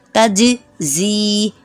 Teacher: حروف قلقلہ ہے جیم، اس لیے اس کو تھوڑا ہلانا ہے